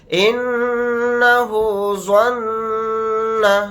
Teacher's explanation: نون کے اوپر تشدید ہے تو یہاں پر غنہ کر کے پڑھیں گے